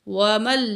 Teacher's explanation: گی، الى اشد العذاب، واو زبر وا، میم زبر لام مل، میم کو لام تشدید کے ساتھ جوائنٹ کریں گے